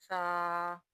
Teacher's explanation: اب سا کو نرمی سے ادا کرنا ہے، اور یہ دانتوں کے سروں سے ادا ہوگا۔